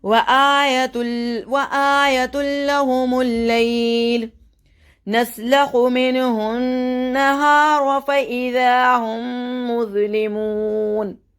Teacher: میم ساکن کے بعد اگر میم مشدد آ جائے تو میم ساکن کو نہیں پڑھتے, ڈائریکٹ میم مشدد کا غنہ کرتے ہوئے مظلمون کر کے پڑھیں گے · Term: ادغام شفوی